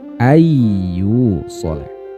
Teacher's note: diidghamkan, dileburkan bunyi nun sukunnya terhadap huruf iya. Awalnya an yusolah menjadi ayyu solah. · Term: idgham bi gunnah